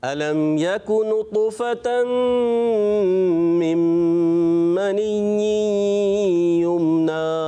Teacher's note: यकु काफ की अदायगी थोड़ी बारीक करेंगे